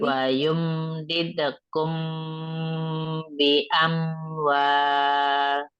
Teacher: Tapi mim ketemu ba-nya dengungkan ya. Kan mimnya ketemu ba.